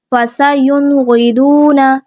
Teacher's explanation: نون ساکن ہے، اس کے بعد غین ہے، ہم ظاہر کر کے پڑھیں گے، یوں، اس طرح سے ہم غنہ نہیں کریں گے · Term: اظہار